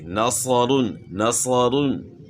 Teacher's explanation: نصو سے یعنی جو زبان کو تالو کی طرف اٹھانے کے ساتھ جو آواز پیدا ہو رہی ہے وہ اصل آواز ہے صاد کی